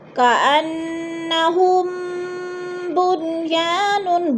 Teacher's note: میم ساکن کے بعد با آ رہا ہے تو ادھر اخفاء شفوی یعنی غنہ کریں گے، آواز کو ناک میں چھپا کر پڑھیں گے